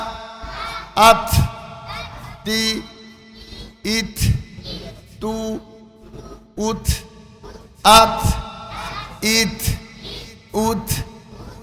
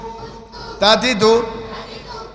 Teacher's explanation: জিহ্বার আগা সামনের উপরে দুই দাঁতের গোড়ার সঙ্গে লাগাইয়া তা